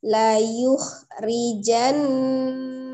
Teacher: tasdid nun ada di situ ya, ditahan ya